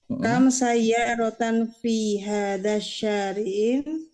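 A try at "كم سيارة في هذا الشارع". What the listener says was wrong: Di situ ada alif lam, jangan ditanwinkan. Jangan dibaca fi hadza syari'in. Namun cukup dikasrahkan.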